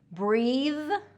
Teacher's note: Breathe has the voiced TH, and breath, breath has the voiceless TH.